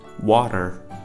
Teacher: the A is pronounced as ah in the standard American accent, and T is converted into a flap T, and there is a pronunciation of at the end.